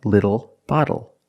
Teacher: the T changes to a fast D in American pronunciation. That's why we do not say little, we say little.